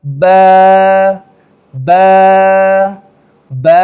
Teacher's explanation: دونوں ہونٹوں کو آپس میں ملایا تو یہ لفظ نکل آیا نرمی کے ساتھ